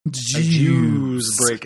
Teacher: he pronounces juice, like, with a real, like, long U